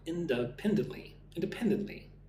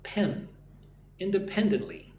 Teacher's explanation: Put the emphasis on the 3rd syllable.